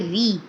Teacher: जब रॉ के नीचे ज़ेर आ जाता है तो हम इसको रॉ ज़ेर री बारीक पढ़ते हैं